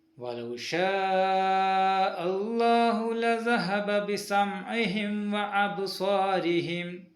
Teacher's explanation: ബ അബ്സാരിഹിം എന്നതിലെ ബ സുക്കൂൻ ഉള്ളത് കൊണ്ട് അവിടെ ചെറിയ ഒരു കൽക്കല